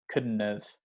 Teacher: You don't really need to pronounce the D.